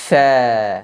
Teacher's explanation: diucapkan tanpa mengangkat lidah karena tidak terangkat maka ruangnya menjadi terbuka karena ruangnya terbuka maka keluarlah suara Fa yang betul-betul tipis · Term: infitah